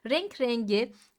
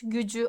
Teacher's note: renk rengi K'nin g'ye dönüştüğünü görüyoruz yumuşama güç gücü arkadaşlar yumuşama ağırmak Neden saçların ağırmış arkadaş değil